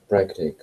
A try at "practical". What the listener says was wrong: I think you're just pronouncing it wrong. You can hear the sounds. What do you put on the end for the cull? Practical. Cull.